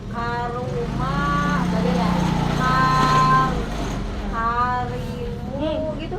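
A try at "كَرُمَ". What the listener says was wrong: Tengahnya mah jangan dirubah-rubah.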